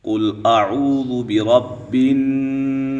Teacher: یہاں پہ قاف موٹا ہے کیونکہ یہ حروف مستعلیہ ہے